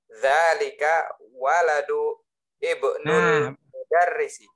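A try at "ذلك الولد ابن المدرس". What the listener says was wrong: bukan dzalika waladu, tapi ada alnya situ. Dzalikal waladu. Coba ulangi lagi. Ya, jadi ditambahkan al-ma'rifah di depannya. Alif lam ma'rifah. Jadi dzalikal waladu ibnul mudarrisi.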